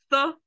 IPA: θ